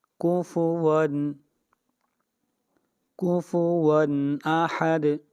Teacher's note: کفوا اظہار ہوگا، اس لیے کہ تنوین کے بعد حروف حلقی میں سے حمزہ آ رہا ہے